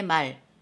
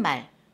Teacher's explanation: 사람이 하는 말이 긴 소리가 됩니다. 그리고 타는 말, 그죠? 자, 타는 말은 짧은 소리가 됩니다. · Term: 소리의 길이